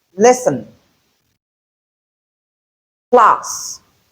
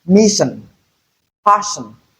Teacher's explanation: So it can be realized as s in words like lesson plus and it can also be realized as sh in words like mission passion. In place of s is here we have the shh sound. · Then, when you have double A's, that can also be considered as a digraph, and it represents two sounds. The first one is the alveolar fricative sound, S, and then the palato-alveolar fricative sound, sh. So it can be realized as S in words like lesson, class, and it can also be realized as sh in words like mission, passion.